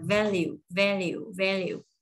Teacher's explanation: dấu nhấn ngầm rơi vào vần đầu tiên, âm v đẩy hai răng cửa chạm môi dưới nè.